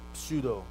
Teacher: you have the unvoiced labial and the s alveolar